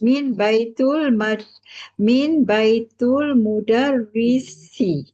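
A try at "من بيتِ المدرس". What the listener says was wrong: Baris bawah Ukhti setelah min. Ya, min baitil mudarrisi. Min baitil mudarrisi.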